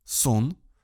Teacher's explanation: Например, в слове «сон» звук «о» звучит слегка в нос. Дело в том, что когда мы произносим согласный «н», мы обязательно опускаем вниз мягкое небо, поэтому носовая полость начинает работать и для предыдущей гласной.